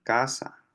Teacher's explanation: es una oclusiva velar sorda